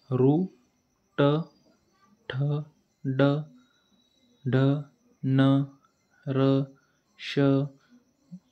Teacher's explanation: जो सेंटरचा भाग यांचा जो मधला भाग आहे त्याला मृदा म्हणतात हे वर्ण उच्चारताना आपल्या जिभेचा शेंडा या मृदाला चिटकतो त्यांना मृदव्य वर्ण म्हणतात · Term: मूर्धन्य वर्ण